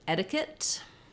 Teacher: in etiquette we have first syllable stress so letter e is going to say the e sound my